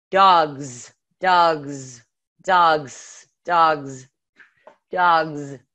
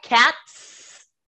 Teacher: so no vibration with cats right cats and then dogs because the sound you are actually making is a z even though we symbolize it with the s for the plural